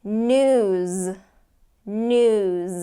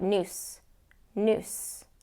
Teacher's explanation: if you don't get that Z sound it's going to sound like noose